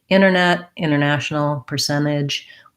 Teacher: Typically with NT words, a lot of times you'll hear Americans say things like internet, international, percentage, where we just leave that T out.